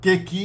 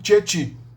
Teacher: o K é uma consoante traseira e o E é uma vogal dianteira. O E e o I são vogais dianteiras, é por isso que o K tende a virar tcha, che, che, chi, né? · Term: palatalização